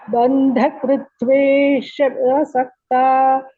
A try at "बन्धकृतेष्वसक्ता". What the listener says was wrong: not kritve kritte. So banthakruteshu asakta. Banthakruteshu asakta. Banthakruteshu asakta.